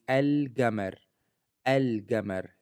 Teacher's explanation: is kept okay nothing happens to the L from l so it is always pronounced clearly without assimilation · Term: Moon letters